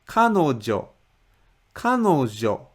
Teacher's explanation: The first mora ka is obviously higher than the rest of the mora, which means this word has stress in the very beginning of the word.